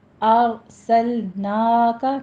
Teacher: نا میں فتح قائمہ 2 کاؤنٹ کریں گے